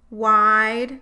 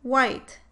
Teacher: In wide, the vowel starts at a lower jaw position than in the word white. In white, the first part of the vowel is raised more towards the mid-central vowel uh.